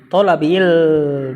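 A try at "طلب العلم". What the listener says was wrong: Enggak ada tanwin.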